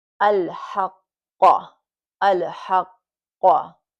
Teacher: So you're holding the qaf and then, but you're going to let it go. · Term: qalqala